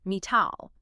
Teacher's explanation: Metal gets the flappy T because the stress is front-loaded, metall. But when you transform the word into an adjective metallic, the stress naturally shifts to the middle of the word.